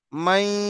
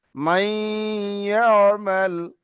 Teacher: এই মিমটা ইয়ার সঙ্গে পড়বো, নুনটা বাদ যাবে, কিন্তু নুনের আওয়াজটা নাকে থাকবে, অর্থাৎ চন্দ্রবিন্দু চাঁদের মতো আওয়াজ হবে, মাই, নাকে থেকে। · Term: ঈদগামে নাকিস